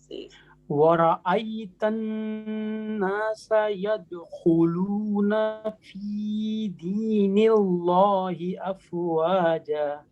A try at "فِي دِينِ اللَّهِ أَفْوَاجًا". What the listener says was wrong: اچھا دیکھیں اس میں ہم اللہ کے نام کو موٹا نہیں کر سکتے. جیسے ہم اگر پڑھیں، ہاں اگر ہم پڑھیں نا بسم اللہ، غلط ہو جائے گا. ہم نے کیا پڑھنا اس کو؟ بسم اللہ. تو اسی طریقے سے فی دین اللہ ایسے پڑھنا ہے.